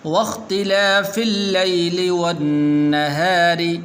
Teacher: را کو باریک کرنا ہے کیونکہ را کے نیچے زیر ہے